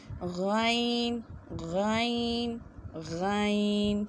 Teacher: غین بھی موٹا پڑھا جاتا ہے، اور اسے حلق کے اوپر والے حصے سے ادا کرنا ہے